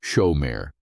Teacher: Shomer is pronounced with the emphasis on the first syllable, shomer. It comes from the Hebrew root meaning to guard, to watch, to keep, to protect.